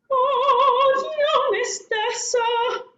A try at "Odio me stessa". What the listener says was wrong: Long vowel again. Lengthen the stress syllable.